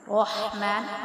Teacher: الرحمن، اب اس ہا کو ہم جو ہے نا حلق سے ادا کرتے ہیں، حروف حلقی میں سے ہے۔ رحمن، را کو ہم نے پر پڑھنا ہے اور ہا کو باریک پڑھنا ہے۔